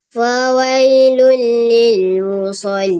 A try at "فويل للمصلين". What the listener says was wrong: Tapi macam fawailul lil tu macam jarkah sikit. Kalau perasan lah, bunyi macam jarkah.